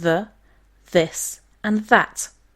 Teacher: We have them in English and Icelandic, but these sounds are completely foreign to other Germanic languages, and their symbols can be unfamiliar too. These are dental fricatives, sounded out by placing your tongue between your upper and lower teeth.